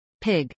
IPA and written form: pˈɪɡ (pig)